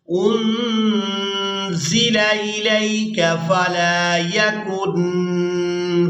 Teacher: یہاں بھی نون ساکن پر اخفا کیا جائے گا، یعنی نون کی آواز کو ناک میں چھپا کر ادا کریں گے